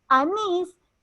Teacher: Anís tiene fuerza de voz en la última sílaba y termina en S, se tilda. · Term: oxítonas